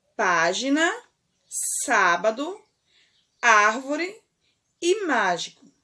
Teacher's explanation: nas palavras acima a sílaba tônica é a antepenúltima então essas palavras elas são chamadas de proparoxítonas proparoxítonas ok vamos